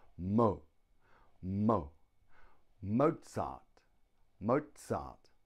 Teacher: two syllables Mozart the stress is on the first syllable